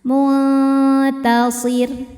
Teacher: Karena sebelum ro disukunkan ada baris kasrah, maka ro-nya tipis. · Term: tarqiq